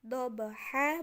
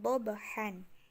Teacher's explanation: tanwin Fathah di akhir ayat itu menjadi panjang tetapi nun-nunnya itu hilang ya jadi kayak tadi dobha bukan dobhan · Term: Mad iwad